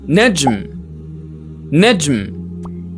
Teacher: To pronounce na correctly, place the tip of your tongue against the ridge, just behind your upper front teeth, the elder ridge. Second, let the air pass through your nose. N is a nasal sound. 3, keep your voice unsteady while holding the sound briefly.